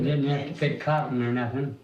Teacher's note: So once again we notice non roticity that drop in the R.